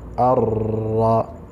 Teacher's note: ya nun ntigaragaye, yaburijwemo cyangwa se yinjijwe muri ra, ariko n'umwuka wayo, kubera ko umenya ko nun ivuzwe ari uko hari umwuka unyuze mu mazuru, bityo iyi nun isa nkaho idahari, tugasoma ar, ra fatha ra, arra.